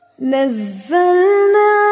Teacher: ठीक है, मुशद्दत की वजह से सख्ती भी होगी, ठीक है, लेकिन ज़ा जो है इटसेल्फ सख्त है, अगर इस पर शद ना भी हो तो भी ये सख्त है क्योंकि इसमें बज़ की आवाज़ आती है